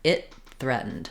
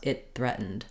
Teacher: we don't have a clear break between it and threatened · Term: unreleased T